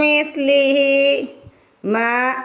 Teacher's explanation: میم کے آگے الف ہے، میم کو کھینچ کے ادا کیا جائے گا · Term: الف مدہ